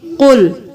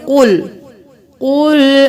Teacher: قل، کل نہیں کریں گے، کل کریں گے تو یہ باریک پڑھنا ہوگا، قاف کو موٹا پڑھیں گے